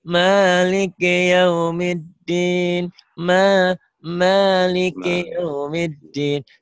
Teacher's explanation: Jangan kepanjangan ma-nya, cuma satu alif.